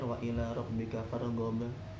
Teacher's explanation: huruf ba makhrajnya ada di kedua bibir syafatain